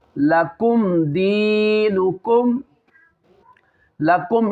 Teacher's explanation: लकुम इसमें गुन्ना नहीं करना मीम में, इज़हार शफवी